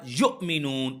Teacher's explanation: حمزہ ساکن کو جھٹکے کے ساتھ یؤمنون اس طریقے سے پڑھیں گے